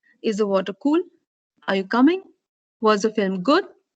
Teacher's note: There is when you will be using your rising tone. You have yes no questions, which would also take up the rising tone.